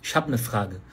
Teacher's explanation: Em vez de falar eine, falou ne.